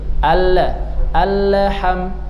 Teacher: sebagian orang kalau baca al-ha berarti dia sudah memantulkan huruf lam yang seharusnya tidak ada sifat qalqalahnya. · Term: lam sukun